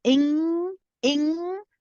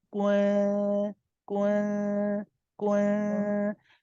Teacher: So with the second one, when you say the first one, you say ing, you feel the sound at the back, right? It's going through the nasal cavity.